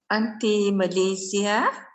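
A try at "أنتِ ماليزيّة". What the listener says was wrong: Malaysia bila orang kan hujung tu dia ada sabdu. Bagi jelas tu. Anti Malaysia. Kalau ada nisbah kepada orang dia ada sabdu hujung dia tu jelas.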